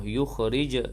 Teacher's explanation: jim yang sukun qalqalah sughra, berdetak kecil. Mimma, wajibul ghunnah, mim yang bertasydid itu wajib dengan dua harakat.